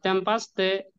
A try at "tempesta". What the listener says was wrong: টেম্পেস্তা, টেম্পাস্তা কই? টেম্পেস্তা, এই যে পি এ এস পেস।